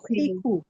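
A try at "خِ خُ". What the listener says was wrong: খা খিকু বলা যাবে না, তাই না? হ্যাঁ, কারণ খাটা কি হরফুল ইস্তেআলা, ওই যে আমরা আমরা 7টা হরফ বলেছিলাম যে এগুলো মোটা হরফ, এর মধ্যে একটা হচ্ছে খা, তাই না? খ বলতে হবে, নট খা।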